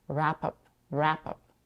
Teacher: She reduces the vowel in the second part of the phrasal verb, up, to a schwa, up. And the 2 words sound like wrap up, wrap up.